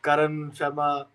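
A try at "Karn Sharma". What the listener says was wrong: It's not Karan. There is no A after the R. It's just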